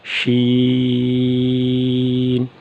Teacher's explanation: زبان کا درمیان ہوگا اور زبان کے بالکل سامنے جو اوپر کا تالو ہے وہاں سے سین ادا ہوگا، شین، شین۔ یعنی زبان کا درمیان اوپر والے تالو سے جو اس کے مقابل ہے اس سے ٹکرائے تو اس سے شین ادا ہوگا، شین۔ اس کے بعد ہے حرف صاد۔